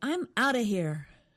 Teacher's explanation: they said out of quickly, so it almost sounds like one word, outa.